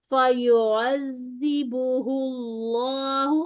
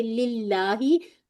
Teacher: और दोनों लाम मुफख्खम होंगे